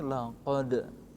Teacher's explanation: Dalam kata kalimat laqad kana, laqad. Nah, laqad dal yang sukun itu wajib dibaca qalqalah, yakni laqad.